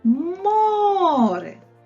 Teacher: молодці перший склад наголошений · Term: наголошений склад